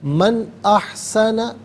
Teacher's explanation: نون ساکن کو یہاں پر اظہار کے ساتھ پڑھا جائے گا، اخفاء یا غنہ نہیں کیا جائے گا